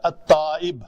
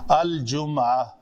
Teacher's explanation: اس لام کو ہم پڑھتے ہیں کیونکہ لام کا مخرج اور جیم کا مخرج بعید ہیں، دور ہیں، یہ آپس میں ان کا ادغام ممکن نہیں ہے کسی بھی طریقے سے، کسی بھی قاعدے سے، تو اس لیے ان دونوں کو علیحدہ علیحدہ پڑھا جائے گا۔